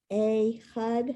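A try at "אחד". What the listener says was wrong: So it's not a, it's eh.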